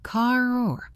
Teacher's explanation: In British English, they often drop the R at the end of words, but in American English, we pronounce it strongly. Car. This affects how words link.